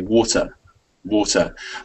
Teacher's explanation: someone who's british will hit that t in the middle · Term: british english way